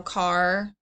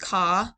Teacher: sometimes students will leave off the final sounds so car would be just caw